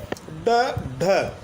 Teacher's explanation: जीभ झटके से वापस आती यानी उछलते हुई आती है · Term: उचित व्यंजन